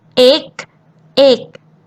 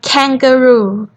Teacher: And then K represent K sound, like kangaroo. The difference between G and K is G doesn't have wind, but K you have to have wind